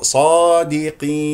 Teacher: يذهب اللسان لمخرج النون ونسمع صوت النون